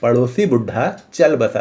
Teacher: तो देखिए हम लोगों ने चल पर ज्यादा प्रेशर दिया है